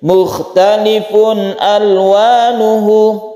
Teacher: ini adalah bacaan izhar halqi, ada tanwin bertemu dengan hamzah.